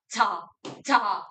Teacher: 아이고 아이고 마찰을 일으키는 즉 파열의 속성과 마찰의 속성을 모두 갖춘 친구. 한 글자씩 따서 하찰음이라고 부릅니다.